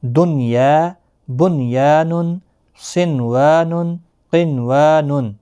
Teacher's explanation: ادغام بھی نہیں ہوگا، گنہ بھی نہیں ہوگا، چونکہ یہ ایک کلمے میں آئے ہیں نون ساکن کے بعد، یا تو یہاں پر اظہار ہوگا، یعنی نون ساکن کو ظاہر کر کے پڑھیں گے۔ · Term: اظہار مطلق